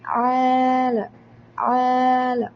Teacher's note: ആലമീൻ രണ്ട് കൗണ്ടേ നീട്ടാൻ പാടുള്ളൂ അതിൽ കൂടുതൽ കുട്ടിയെ നീട്ടിയാൽ തെറ്റാണ് മൂന്ന് കൗണ്ട് ആയാൽ മദ് ശാഖ മാറി